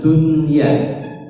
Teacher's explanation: kalau nun dan ya itu berada dalam satu kata, maka nun dibaca jelas. Dunya itu satu kata.